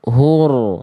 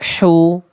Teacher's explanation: Karakter nafasnya berbisik, lembut dilafalkan dari bagian tengah tenggorokan. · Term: hak kecil